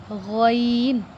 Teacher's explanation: غین حلق کے اوپر والے حصے سے ادا ہوتا ہے